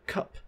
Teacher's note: There are many different types of Ks, such as the palatal K in the word like cute, or we have an aspirated K in the word cup